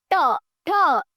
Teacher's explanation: जैसे बोलने की कोशिश करिए, आप देखेंगे आपका जो जीभ का जो आगे का पोर्शन है ये आपके तालू के ऊपर वाले पोर्शन से टच हो रहा है। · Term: मूर्धन्य व्यंजन